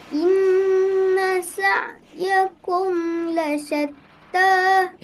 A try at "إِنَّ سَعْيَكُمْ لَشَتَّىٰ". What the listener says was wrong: Jangan turun kat lasyatta tu. Naik. Inna sa'yakum lasyatta.